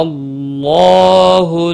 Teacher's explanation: اللہ کا لام پر پڑا جائے گا زبر کی وجہ سے اور اس کے اوپر کھڑی زبر بھی ہے، ایک الف کے برابر کھینچ کر پڑھیں گے۔